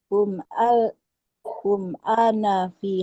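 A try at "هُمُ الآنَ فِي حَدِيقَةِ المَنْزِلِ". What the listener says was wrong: Humul ana, sambung aja. Humul ana.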